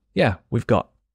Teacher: So the letter T at the end of got just disappears. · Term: letter T disappearing